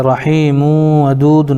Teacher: رحیم ودود میں یا ساکن سے پہلے ہا کے نیچے زیر ہے اس لیے یا مدہ ہوگا, ان کو تھوڑا کھینچ کر پڑھیں. میم کے اوپر دو پیش کی تنوین ہے, تنوین کے بعد حروف یومن میں سے واو آ رہا ہے اس لیے ادغام یرملون مع الغنہ ہوگا · ودود میں واو ساکن سے پہلے دال کے اوپر پیش ہے اس لیے واو مدہ ہوگا, ان کو تھوڑا کھینچ کر پڑھیں